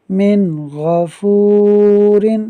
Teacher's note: یہاں نون ساکن کے بعد غین حروف حلقی میں سے ہے، جس کی وجہ سے یہاں اظہار کا قاعدہ ہوگا، یعنی نون ساکن میں غنہ نہیں کریں گے۔